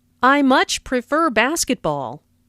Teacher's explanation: Notice how much is stressed to show that the speaker really likes basketball.